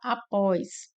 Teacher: Após nós temos como a sílaba mais forte o pós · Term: oxítono